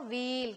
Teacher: both, दोनों की आवाज सेम तरह से अदा होती है, लेकिन विल जो है जल्दी पढ़ा जाता है क्योंकि इसका इस्तेमाल शॉर्ट वॉवल करके इसको लिखा गया है, जबकि यहाँ पे लॉन्ग वॉवल का इस्तेमाल हुआ है, इसलिए इसको व्हील, खींच के पढ़ा जाता है